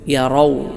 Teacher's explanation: റാ തഫ്ഹീം അഥവാ ശബ്ദ പ്രതിധ്വനി വായനിറയിൽ ഉണ്ടാകുന്ന രൂപത്തിൽ തടിപ്പിച്ചു കൊണ്ട് ഉച്ചരിക്കുക